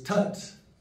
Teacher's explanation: T pronounced like the English T with the tongue touching the back of the teeth.